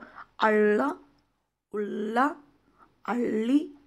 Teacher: ह्याचा उच्चार करताना आपल्याला जीभ जी आहे ती आतमध्ये वळवायची आहे. जसं आपण ळ बोलताना मराठीमध्ये ळ बोलताना जशी आपली जीभ वळते तशीच वळवायची आहे.